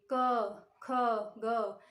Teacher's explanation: आप क का उच्चारण करिए, क से लेके अंग तक ध्वनि कहाँ से निकलेगी? कंठ से निकलेगी। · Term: क वर्ग